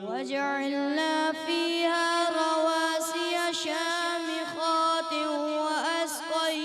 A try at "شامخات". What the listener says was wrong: شامخات غنہ تھوڑا سا کمپلیٹ کرنا ہے. دوبارہ پڑھیں.